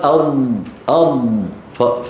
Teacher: الضاد رخوه ما هي شديده